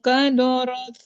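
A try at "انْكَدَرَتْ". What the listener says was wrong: Kadarot bukan kadorot, bukan daknya tipis. Kadarot, roknya yang tebal.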